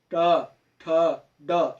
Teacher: तो वो जो है उसको मूर्धा कहते हैं। मूर्धा मतलब बोलते समय जीभ का हल्का मुड़ जाना, ठीक है। तो उनका उच्चारण स्थान है मूर्धन्य।